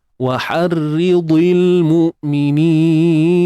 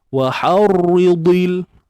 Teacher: Waharri, nipiskan ra, di, tebalkan dad. · Bila ra baris bawah baca nipis. So kena baca nipis.